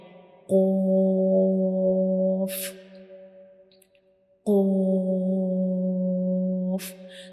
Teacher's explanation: This is the soft palate, and when we pronounce Qaf, the very back part of our tongue will touch the soft palate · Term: heavy letter